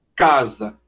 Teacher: A oclusão ou obstrução acontece na parte posterior da boca a parte posterior é a parte de trás já lá perto